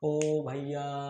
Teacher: इसके बाद फिर आते हैं प्लुत स्वर। प्लुत स्वर जिसको दीर्घ स्वर से भी अधिक समय लगता है बोलने में